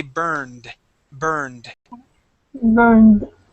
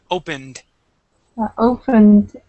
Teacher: that ED is going to sound like a D instead of a T. Okay, so we say burned. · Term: D ending